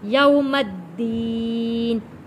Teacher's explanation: میم کو جوڑیں گے تشدید والے دال کے ساتھ